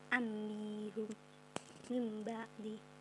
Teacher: Iklab yaitu mengganti nun sukun menjadi mim mati, dibaca dengan dengung. Hurufnya hanya ba.